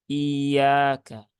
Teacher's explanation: Sehingga terbacanya iyaka. Jadi malah memanjangkan hamzah yang ada di depannya. Nah, maka harus dinaberkan ya.